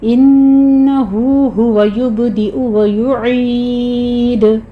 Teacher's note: عین کو وسط حلق سے ادا کرتے ہوئے آخر پہ دال کے پر قلقلہ کر لیں گے